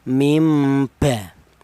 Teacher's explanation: Nun mati ini diganti dengan huruf mim. Ini di sini diperlihatkan ditulis ada mim kecil bahwa cara bacanya nun matinya ini diganti dengan huruf mim. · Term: iqlab